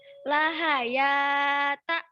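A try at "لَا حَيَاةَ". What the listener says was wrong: Yang panjang mana? Lam Jawab. sama ya. Lam. Kenapa nggak dibaca panjang?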